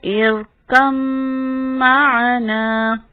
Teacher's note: ارکم معنا، میم شد کی وجہ سے غنہ ہے